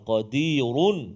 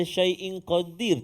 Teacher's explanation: Kalau sambung baru tebal, kalau waqaf berhenti nipis bunyi ra tu